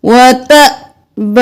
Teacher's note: حمزہ پر جزم ہے تو جھٹکا دیں گے